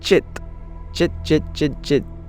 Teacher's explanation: chit chit chit chit chit I'm not using a palal cilant I'm using a palatal unvoiced unaspirated stop